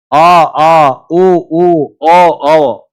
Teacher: पश स्वर जो पीछे से उच्चारण होते हैं स्वर मुख में पीछे से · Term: पश्च स्वर